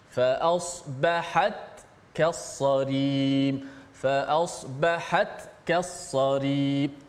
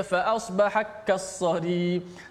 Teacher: kita baca dengan menjelaskan ta itu dimatikan, dibunyikan jelas matinya